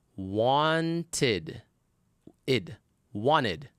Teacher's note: the ed ending is going to be pronounced as id with a vowel sound. You add a syllable to the word.